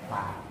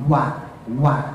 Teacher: Jadi kalau fa bibir bagian dalam digigit gigi atas. Tapi kalau wa bibir bagian dalam dua-duanya atas bawah. Jadi enggak mainin gigi.